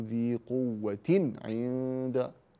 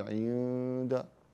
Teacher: يقرع اللسان مخرج النون في التنوين فتقول ذي قوه عند ثم اقول عند هنا تخفى النون قوه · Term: الاظهار